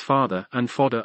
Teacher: The vowels of the stressed syllables in such words as father and fodder are generally identical.